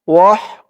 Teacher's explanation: হার আওয়াজটা গলার ভিতর থেকে চিকুন হয়ে বের হবে